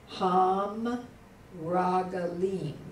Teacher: the Dagesh Forte is given up, but the Patak vowel, a short A, is not lengthened